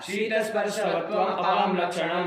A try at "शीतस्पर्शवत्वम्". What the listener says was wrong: तो शीतस्पर्शवत्यम कौन बोला है? कहाँ त्यम क्या होता है? ये त्यम होता है मनुष्यत्यम होता है, मनुष्यत्वम होता है, घटत्वम होता है, घटत्यम होता है। तो फिर त्व प्रत्यय होता है ना बाबू।